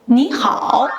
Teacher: When two third-tone characters are adjacent the first often changes to a second tone for ease of pronunciation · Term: Tone Sandhi